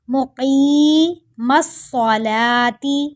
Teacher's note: قاف کو بھی موٹا کریں گے اور ایک الف کے برابر لمبا کریں گے، صاد موٹا پڑھا جائے گا اور لام کو ایک الف کے برابر لمبا کر کے پڑھیں گے۔